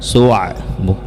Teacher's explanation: ain makhrajnya ada pada pertengahan tenggorokan, su'a. Jadi ain tidak mempunyai sifat gunnah, jadi jangan sampai masuk ke hidung.